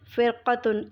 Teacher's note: فرقتن، اس میں را ساکن سے پہلے حرف پر زیر ہے اس لیے اس را کو بھی باریک پڑھیں گے